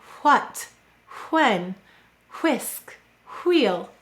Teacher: in some dialects, people say what, when, whisk, wheel, an unvoiced sound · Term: unvoiced w